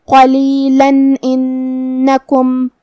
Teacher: قاف کی ادائیگی زبان کے جڑ اور تالو کے نرم حصے سے ہے. قاف حروف تفخیم میں سے بھی ہے تو ہم قاف کو بھاری آواز میں پڑھیں گے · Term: حرف القاف